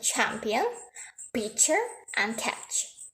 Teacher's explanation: a sound that have a combination between a stop and a fricative